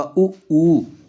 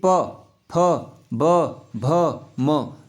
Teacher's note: आपका होठ काम करेंगे इसमें, इन वर्णों को बोलने में। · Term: ओष्ठ